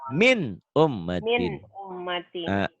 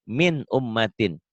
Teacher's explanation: Karena nun mati ketemu alif, maka bunyi nun matinya harus dibaca jelas. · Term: Izhar